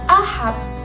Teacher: bunyi D menyerupai bunyi T apabila berada pada akhir kata dan diucapkan secara cepat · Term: realisasi fonem